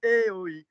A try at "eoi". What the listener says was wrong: No, eoi, eoi. Smooth it in one go. Eoi.